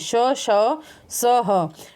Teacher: यहाँ पे चारों में गर्म हवा निकलती है मुंह से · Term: ऊष्मीय व्यंजन